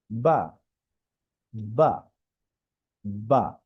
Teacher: বা উচ্চারণ একদমই সহজ, এখানে লেখা দুই ঠোঁটের ভিজা জায়গা হইতে উচ্চারণ হয়। আমাদের ঠোঁটের দুইটা অংশ, একটা ভিতরে একটা বাহিরে।